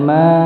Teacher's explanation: Jadi disebut mad jaiz ya, dia panjang 4 harokat dikarenakan bertemunya huruf mad atau alif di situ ya dengan hamzah